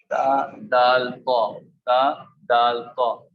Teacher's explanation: مخرج نمبر 12، زبان کی نوک جب اوپر سامنے والے دو دانتوں کی جڑ سے لگے، اس سے تا، دال، طا ادا ہوتا ہے